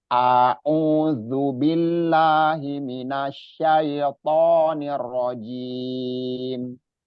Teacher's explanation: A itu balik lagi kita ingat makhrotnya ada di tenggorokan paling bawah. Satu makhrot dengan H. Jadi cara bacanya itu kita keluarkan dari makhrotnya. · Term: hamzah